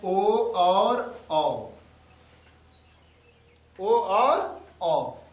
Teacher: कंठोष्ठ मतलब कंठ और ओठ से बोले जाते हैं ओ और औ